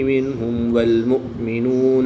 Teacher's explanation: میم ساکن کے بعد حرف با اور میم کے علاوہ حرف واو ہے تو یہاں پر اظہار شفوی ہوگا، یہاں پر بھی غنہ نہیں کریں گے بلکہ میم ساکن کو خوب ظاہر کر کے پڑھیں گے